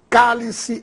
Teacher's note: se trata de uma palavra proparoxítona pois a sílaba tônica está na antepenúltima cá por isso recebe acento gráfico o mesmo acontecerá com lâmpada